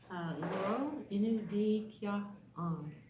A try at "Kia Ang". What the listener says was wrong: So your voice went down. Kia Ang. Kia Ang. Not Kia Ang. Kia Ang is when you're asking a question, the voice goes down. Like if I ask you your name, Sinodam Kia Ang. Kia Ang. Now it goes down. But when I'm answering you, it goes Kia Ang. It goes up.